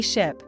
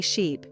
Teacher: Say ship, and really focus on keeping the vowel short and relaxed. Then say sheep, and stretch the vowel out longer. You can exaggerate the sounds at first to help your mouth learn the difference.